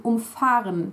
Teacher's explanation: the verb umfahren is emphasized on fahren, the base verb, which means that the prefix is not detachable.